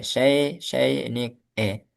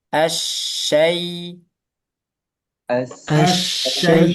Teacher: Asyai. Ya sukun juga bunyinya ke i. Syai jangan ke e.